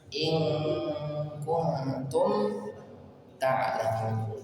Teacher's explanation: Di sini dengung. Nun sukun ketemu ta dengung ikhfa. Tum dibaca jelas.